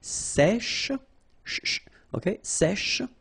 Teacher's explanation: we've got this E accent grave here, so it's really open